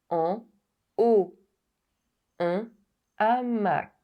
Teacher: the mute H allows the liaison and the aspirated H prohibits it.